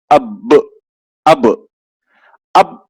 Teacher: جب ہم اس پہ جزم آ جائے گا تو اس کو پڑھتے وقت ہونٹ ٹکر کھا کر الگ ہو جائیں گے. اب اب اب رکنا نہیں ہے، ٹکر کھا کے الگ ہو جانا ہے. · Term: حروف خلخلہ